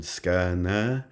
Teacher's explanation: two etas, two bimoraic vowels